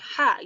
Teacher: letak huruf H ini terdapat pada tenggorokan bagian tengah atau wastul haki, yaitu daerah katup tenggorokan atau epiglotis bertemu dengan dinding tenggorokan, bagian belakang atau tempat keluarnya huruf H.